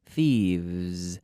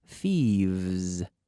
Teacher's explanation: V to pronounce the V in English the very good V we start with the F and then we activate the vocal cords